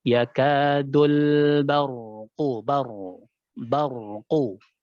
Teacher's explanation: Dul tipis ya, istifal pada huruf lam.